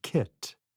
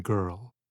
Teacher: with the back of the tongue making contact with the roof of the mouth at the soft palate, we have the sound k, as in kit, and g, as in girl.